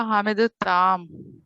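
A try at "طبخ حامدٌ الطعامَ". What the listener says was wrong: हामिदुन ताम, हम यहाँ क्यों पढ़ेंगे इसको? हामिदुन ताम, इसलिए कि हामिदुन के ऊपर तन्वीन है और आगे अल आ रहा है, तो जब अल आ रहा हो पीछे तन्वीन हो तो उसको फिर एक नून को बढ़ाकर जेर देके पढ़ते हैं ना।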